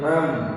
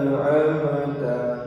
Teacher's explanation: ini harus habis ya, bunyi nun, bunyi mim, sukun. An, kemudian am, jadi harus habis. Apalagi jangan sampai mantul, jangan amata.